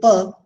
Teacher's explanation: pa sound is bilabial, it is plosive, and it is voiceless